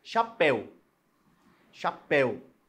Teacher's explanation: a sílaba tônica é a última ela tem acento porque a regra das oxítonas permanece a regra